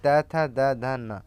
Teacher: दंत दांतों से यानी त थ द ध न